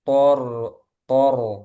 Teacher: ini sama-sama tebal th tebal ro tebal